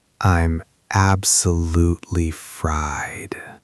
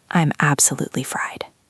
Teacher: You can hear the exhaustion in the vowel sounds. You drop your pitch at the end.